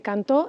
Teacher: la sílaba tónica de cantó es to y la vocal tónica es la o